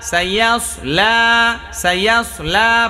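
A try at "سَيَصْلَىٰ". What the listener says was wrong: সায়াসলা সায়াসলা সায়াসলা সায়াসলা সায়াসলা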